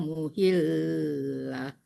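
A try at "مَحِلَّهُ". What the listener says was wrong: Mahil, bukan muhil. Udah 2 kali muhil.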